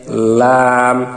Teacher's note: জিহ্বার আগার কিনারা সামনের উপরের দাঁতের মাড়ির সঙ্গে লাগাইয়া লাম। এখানে জিহ্বার একেবারে সামনের আগার কিনারাটা পাতলা হয়ে তার উপরের